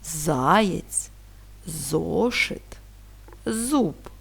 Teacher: звук з є приголосним твердим, оскільки він вимовляється з перешкодою і твердо